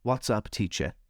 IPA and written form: wɒts ʌp ˈtiːʧə (What’s up, teacher?)